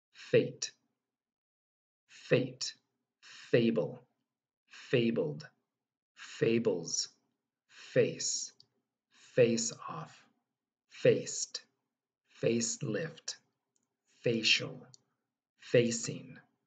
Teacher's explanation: there is no voice coming out just air it's all coming out the mouth you're gonna gently bring your upper teeth onto your bottom lip